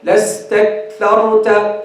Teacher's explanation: they don't make the hams for the kaf.